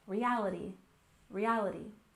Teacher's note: reality has a stress on the second syllable